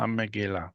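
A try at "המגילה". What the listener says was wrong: This is more like the modern Hebrew R, how they do the resh in modern Hebrew. That should be the gimel with no dot. Gimel refuya. This is gimel refuya. Hamghila, hamghila. If you struggle with it, just pronounce it as a G, as in good.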